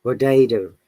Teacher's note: the t becomes d when it is in between two vowels like in potato that is a and there is t before and after that's